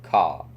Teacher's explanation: British English is non-rhotic, meaning you do not pronounce the R at the end of a word, unless a vowel follows it.